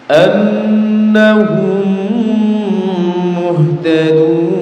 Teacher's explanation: namanya apa namanya jemaah Iya Bagaimana cara membacanya cara membacanya adalah mim yang pertama dimasukkan ke mim yang kedua disertai mendengung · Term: idgham mimi